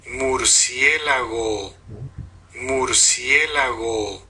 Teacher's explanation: La nasal bilabial, que como es un sonido, tiene formantes, también tiene resonancia.